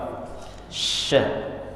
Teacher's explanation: kalau sya tengah lidah, sama makhrajnya tempat keluarnya dengan ya, ja, sya, ya. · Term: shin